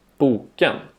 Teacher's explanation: Tone 2 is a falling, rising, falling tone. The pitch falls on the stressed syllable, then rises and falls again on the unstressed syllable that follows.